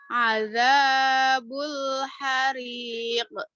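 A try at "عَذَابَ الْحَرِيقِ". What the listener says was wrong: Masih hariq. Masih ke, jangan ke. Ayo, dikembalin ke tebal. Jadi mantul itu bukan di suaranya aja, tapi sifatnya juga. Ya, jadi ke o.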